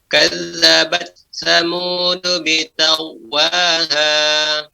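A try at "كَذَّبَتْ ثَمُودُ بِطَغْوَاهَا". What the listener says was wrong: Ya, to-nya lebih ditampakkan lagi. Bito, to. Bitagwaha.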